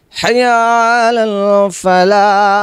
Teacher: কণ্ঠনালীর মধ্যস্থল থেকে এই হাটা উচ্চারণ করতে হবে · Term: বড় হা